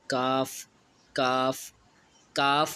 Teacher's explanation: اقصائے لسان، زبان اور مقابل کے تالوں کا سخت حصہ جو منہ کی جانب ہے، اس سے کیف ادا ہوتا ہے۔ یہ جو ہوتا ہے نا، یہ سخت حصے سے ادا ہوتا ہے، اور تالوں کا نرم حصہ جو ہے نا، اس تالوں کے نرم حصے سے قاف یعنی نقطوں والا قاف ادا ہوگا، اور جو سخت حصہ ہے اس سے کاف ادا ہوگا۔